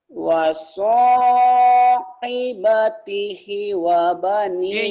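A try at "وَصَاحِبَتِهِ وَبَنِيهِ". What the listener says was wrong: I-nya panjang kan ada yang berdiri nih. I-nya panjang.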